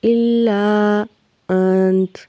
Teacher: نون پہ اکفا ہوگا، آواز کو ناک میں چھپائیں گے